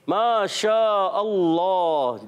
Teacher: मुंह में आवाज फैल जाना, मिलकर बोले, मुंह में आवाज फैल जाना। इसको कहते हैं सिफत तफ़शी